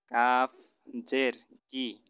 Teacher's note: কফটা একটু ধাক্কা দিয়ে পড়তে হবে, কারণ কফটা হলো কলকলার হরফ।